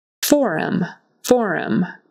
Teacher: Accent on the first syllable